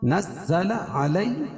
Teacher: یا ساکن سے پہلے زبر ہے، اس کو نرمی کے ساتھ جلدی ادا کریں گے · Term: یا لین